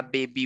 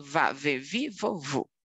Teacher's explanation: a letra b e a letra V também não são iguais letra B bilabial da Bibi vovô e letra V labiodental